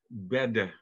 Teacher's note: En dan zou badi, met nog de i aan het eind, typerend zijn voor het oud-Nederlands. Bedde, met nog een e, een schwa, voor het middeleeuws Nederlands.